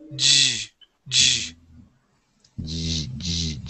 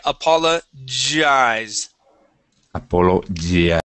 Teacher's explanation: So right now you're saying apologize, okay, pronouncing more of a Y sound, yes, okay, that G makes a J sound. Now, the difference with the J is that you'll have a vibration right here in your throat, okay, it's a voiced sound